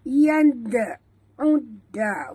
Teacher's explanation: ain masuk terus ke dalam dal disertai dengan tekan kerana di atas dal ada tasydid. Kita tak bunyikan alif lam.